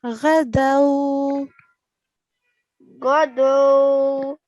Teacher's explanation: so we do not prolong this fatha of ghain.